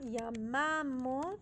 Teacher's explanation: the stress goes on the middle syllable yam p not the I it's on the a why on